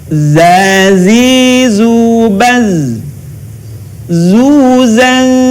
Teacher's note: huruf dza dikeluarkan dengan ujung lisan kita hampir di atas dua gigi seri bagian bawah diucapkan dengan mengalir suara tanpa diiringi dengan mengalirnya udara melewati Hai